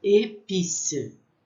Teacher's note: o som com esse acento agudo, ele tem um som fechado, que é épice